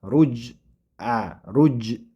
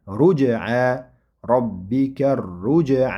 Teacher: Ya'ni havonni ichiga yutib ruj rujj deb bu xatobi. Demak buni sukunlik bo'lgan paytida jim qalqala qilib o'qiladi.